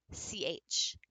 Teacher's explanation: as soon as you hit your tongue against the back of your teeth you've made an affricate